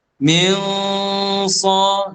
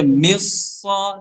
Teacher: Dia mesti baca dengan keadaan menyembunyikan nun itu dan mengekalkan gunnah bagi nun itu, gunnah bagi nun itu untuk bertemu dengan huruf selepas dia. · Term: ikhfa